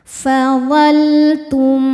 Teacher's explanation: Selanjutnya ada izhar syafawi. Karena mim sukun tidak menghadapi mim atau ba melainkan menghadapi ta. Cara bacanya mim sukun ini dibaca dengan jelas